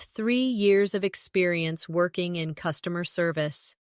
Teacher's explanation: Emphasize three years and customer service to highlight your strengths.